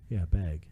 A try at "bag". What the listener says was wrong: Not bag. You're saying it with an A.